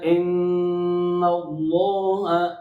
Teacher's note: ان اللہ، ان پر مشدد غنہ ہے، اللہ کا لام موٹا ہے، اور اللہ کے لام میں جو کھڑی زبر ہے اس کی مقدار الف مدہ کے برابر ہوتی ہے. یہاں اللہ کا لام بھی موٹا اور کھڑی زبر میں جو چھپی ہوئی الف مدہ ہے اس کو بھی موٹا کرنا ہے.